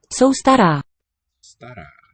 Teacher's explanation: Let's hear the accent marks, not that it's high, but long.